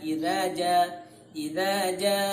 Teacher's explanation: ja itu adalah 5 harokat